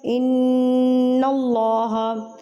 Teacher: اللَّهَ، نون مشدد، تو نون مشدد پہ ہم نے غنہ کرنا ہوتا ہے